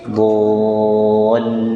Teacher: Dol ada ayunan, kemudian tahan lamnya.